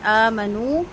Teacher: حمزہ اور نون دونوں کو 2 حرکت لمبا کریں گے۔